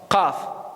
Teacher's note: C'est tout le fond de la langue qui travaille.